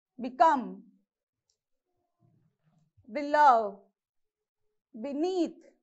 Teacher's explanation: You have to use force on the second syllable.